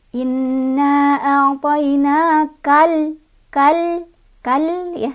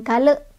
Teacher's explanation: Jadi dibacanya alif lamnya jangan mantul ya, lam sukunnya jangan mantul. Jadi inna a'tainakal kal ya, jangan kal. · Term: alif lam qamariyah